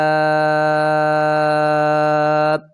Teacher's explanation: 5 الف کی مقدار کھینچ کر پڑھیں گے، کیونکہ حمزہ اسی کلمے میں ہے، مد بڑی ہے۔